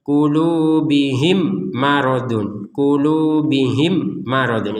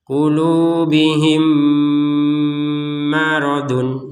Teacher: mim yang pertama dimasukkan kepada mim yang kedua dan diperkuat dengan adanya tasdid di atasnya mim yang kedua. Sehingga ini dibaca dengan dengungan.